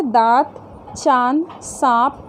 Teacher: इसका उच्चारण नाक और मुंह से होता है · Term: चंद्रबिंदु